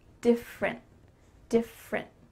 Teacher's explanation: That means that your tongue is stopped at the top of your mouth. You're going to say different, but you don't let that little final puff of air come out. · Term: stopped T